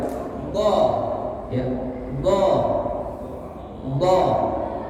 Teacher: Go tekanannya di bagian di sini ya. Pangkal lidahnya bertemu dengan gigi gerahamnya, tekanannya agak kuat.